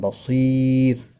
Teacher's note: را باریک پڑھا جائے گا وقف کی صورت میں یا ساکن کی وجہ سے، اور ملانے کی صورت میں اظہار حلقی ہوگا.